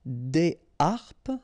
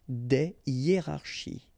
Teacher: Des harpes, okay, so you don't make the liaison between the two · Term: H aspiré